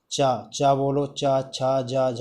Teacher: आपकी चा बोलने पर आपकी जीभ जो है कहाँ लग रही होगी? ताल पर, ताल को स्पर्श कर रही होगी। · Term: चा वर्ग